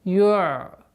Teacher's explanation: Айн при сукуне, как мы говорили уже, неоднократно повторяли, мягкая, интенсивная остановка. Ю'тика. Та твердая.